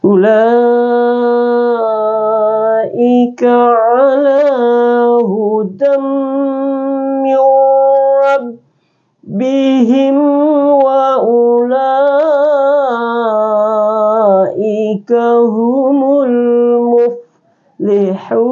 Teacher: Ya ini adalah mad wajib muttasil, jadi 5 harakat.